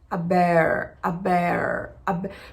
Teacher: a língua, ela faz uma curva quando a gente precisa pronunciar esse R